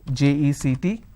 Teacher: I need to stress on the second syllable. When I do that, it means it's a verb. · When I'm stressing on the first syllable, it becomes a noun.